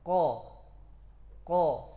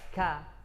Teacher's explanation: yang keras ya bagian atas itu yang keras itu makhraj Kaf di belakangnya yang lembek itu itu makhraj qaf jadi lebih dalam qo qo Nah kalau ke depan ka ya masuk a a